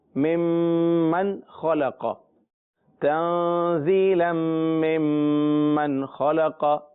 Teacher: پھر میم کا میم میں ادغام ہے تو دوبارہ میم غنہ، اور آگے جو میم نون زبر من ہے وہاں غنہ نہیں ہوگا، کیونکہ غنہ کرنے کے لیے ہم اگلا حرف دیکھتے ہیں کہ وہ کیا ہے، تو وہ نون کے بعد اگلا حرف حروف حلقی میں سے ہے، لہذا غنہ نہیں ہوگا